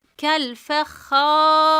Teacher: Bakın arkadaşlar ra cezimlidir. Kendinden önceki harf esreli olduğu için ra'yı ince okuruz.